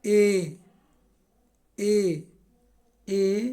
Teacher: ए बोलिएगा तो आपको लगेगा ए आगे हो गया, यानी अग्र स्वर जाएगा